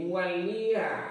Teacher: Nah, ada ketemu lam lagi, lam yang bertasdid ya, dibaca ganda